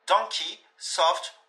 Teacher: Le O lui aura une prononciation /ɒ/ relâchée